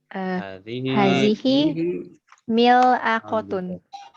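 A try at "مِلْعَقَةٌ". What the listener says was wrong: Mil'aqatun, bagus.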